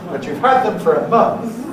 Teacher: Those of you who know about Heads will notice a Falling Head on <had>